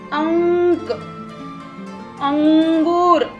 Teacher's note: इसके अंदर हल्का सा न का साउंड आता है